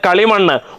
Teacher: വന്നിരിക്കുന്നു മധ്യമം ശിഥിലമായതിനാൽ ഇരട്ടിപ്പ് സംഭവിക്കുന്നില്ല പക്ഷേ സന്ധി ദ്വിത്വസന്ധിയാണ് കളിയധികം മണ്ണ് കളിമണ്ണ് ഉത്തരപദത്തിന്റെ ആദിയിൽ മ എന്ന അനുനാസികം വന്നിരിക്കുന്നു അനുനാസികം ശിഥിലമായതുകൊണ്ട് ഇരട്ടിപ്പ് സംഭവിക്കുന്നില്ല